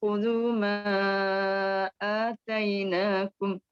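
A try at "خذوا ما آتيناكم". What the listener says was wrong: Tak cukuplah ma, panjangkan sikit lagi ma 6 harakat. Ambil balik khudhu ma.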